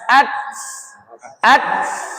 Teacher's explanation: Kalau ta dia bukan mantul tapi bernafas. Keluar nafas. · Th dal sifatnya qalqalah. Ta sifatnya hames, keluar nafas. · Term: hamas